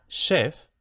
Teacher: la desafricación de esta che inicial, es decir, se convierte en sh.